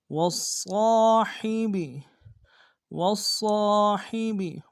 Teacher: والجار الجنوب والصاحب والصاحب، واو کو صاد کے سامنے لائیں گے، صاد کو موٹا ادا کریں گے، صاد کے ساتھ تشدید ہے، زور دیں گے ، اور صاد کے ساتھ الف مد کے درمیان میں کھینچیں